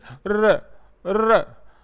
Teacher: इसमें लुंठित या प्रक पित इसको नाम दिया गया है क्योंकि र के उच्चारण में जीभ प्राय मुख के बीच में आ जाती है और झटके से आगे पीछे चलती